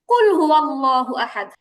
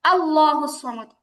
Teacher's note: আল্লাহ শব্দের আগে আলিফে জবর আছে, হামজাতে জবর আছে, আমরা আল্লাহ মোটা করে পড়ছি